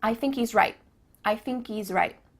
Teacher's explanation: at the end of the word right there's no T sound